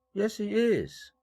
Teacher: 마지막으로 do나 비동사가 오면 다 대동사, 대술부 역할을 함으로 일강세를 받게 됩니다.